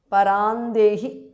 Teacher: because of sandhi anuswara changes to nu there